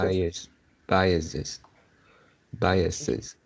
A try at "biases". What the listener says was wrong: You pronounce is behind is the second the es you pronounce is s, s. You pronounce s, not pronounce z.